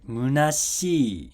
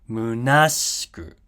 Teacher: And once again, the accent is moving over one space to the left. So in munashi, it drops after shi, right? Munashi. In munashiku, it drops after na. Munashiku. And this sh here is also unvoiced like the ts here, which is why it's in hiragana.